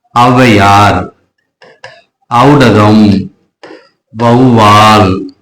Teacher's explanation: அப்ப ஐகார குறுக்கம் சொல்லுக்கு முதல்ல வரும்போது எப்படி அரை மாத்திரை குறைச்சோ அதே போலதான் ஔகார குறுக்கம் சொல்லுக்கு முதல்ல வரும்போது அரை மாத்திரை குறைந்து 1.5 மாத்திரை அளவில் ஒலிக்கும்